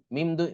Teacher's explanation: নুনে সাকিনের পরে যেহেতু বা আসছে, এই জন্য এখানে এই নুনটা মিমের উচ্চারণ হচ্ছে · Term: ইকলাব